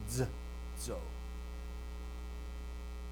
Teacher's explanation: So it's alveolar, and it's in somewhat of a sibilant. So that is its only form for sibilant, is that z.